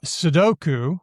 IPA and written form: sədoku (sudoku)